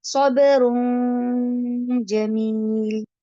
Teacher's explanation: دو پیش آ گئی، لیکن اس کو میں نے کیا کیا، صبرون کے اینڈ پہ جو نون کی آواز آتی ہے اس کو ناک میں چھپا دیا